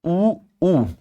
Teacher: ऊ में बिल्कुल ना के बराबर मुंह खुलता है। देखो दांत में और इसमें कितना रिक्त स्थान है।